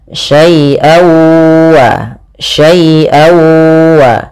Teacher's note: suara tanwinnya masuk kepada huruf waw. Jadi awalnya syai'an ketemu waw, dibaca syai'awa, syai'awa.